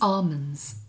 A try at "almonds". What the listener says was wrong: It's not got an R in it. You're saying almonds. No, it's almonds. It's A-L-M-O-D-N-S.